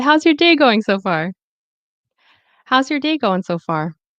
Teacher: the stress, as you can see, it is on day, and far. And remember that connected speech, this will be usually reduced to your.